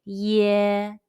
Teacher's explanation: ye in the english word yes but it's prolonged say ye remember your lips are spread and do not add an e sound after the yeah